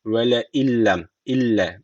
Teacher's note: Gunnesiz bir şekilde bağlıyoruz. Yani şu lamı şeddeli okuyoruz. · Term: idgamı bila gunne